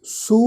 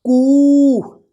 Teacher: ਲਮਕਾ ਕੇ ਲੰਮੀ ਆਵਾਜ਼ ਵਿੱਚ ਹੇਕ ਵਿੱਚ ਅਸੀਂ ਉਚਾਰਨ ਕਰਾਂਗੇ। ਜਿਵੇਂ ਅਸੀਂ ਬਿਹਾਰੀ ਦੀ ਮਾਤਰਾ ਦਾ ਉਚਾਰਨ ਕੀਤਾ ਸੀ, ਕੰਨੇ ਦੀ ਮਾਤਰਾ ਦਾ ਉਚਾਰਨ ਕੀਤਾ ਸੀ, ਇਸੇ ਤਰ੍ਹਾਂ ਦੁਲੈਂਕੜ ਦੀ ਮਾਤਰਾ ਦਾ ਵੀ ਉਚਾਰਨ ਲਮਕਾ ਕੇ ਅਸੀਂ ਉਚਾਰਨ ਕਰਾਂਗੇ।